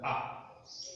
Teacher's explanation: હ્રસ્વની અંદર અ અને દીર્ઘની અંદર આ. અ અને આ બંનેનું ઉચ્ચારણ સ્થાન કંઠ છે